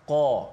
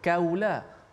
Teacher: qaf sifatnya dengan kuat, sifat yang kita kata tinggi, isti'la, tebal